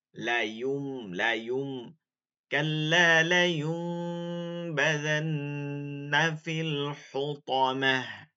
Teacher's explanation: বানান করবেন ইয়া নুন পেশ, কিন্তু পড়বেন ইয়া মিম পেশ